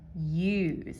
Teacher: when you say use, you're not using the Z for the Z. You're using an S. Use. It's that voiced S.